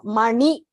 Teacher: that na is the one where you roll your tongue. Na, the Munushuri na.